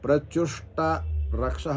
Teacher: రేప కానీ ఊష్మ గాని పరంగా ఉన్నప్పుడు మకారమునకు లోపం వచ్చును